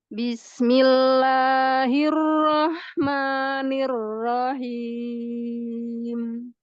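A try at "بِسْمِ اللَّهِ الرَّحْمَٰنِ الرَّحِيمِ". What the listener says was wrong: Jangan naik ke atas suaranya. Dorong depan. Al-jauf. Ar-Rahmah.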